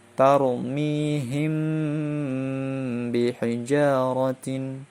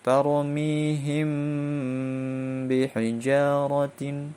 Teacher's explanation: ikhfa syafawi dengan dengung 2 harokat dan mempunyai 1 huruf yaitu ba.